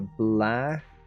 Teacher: the K is nearly silent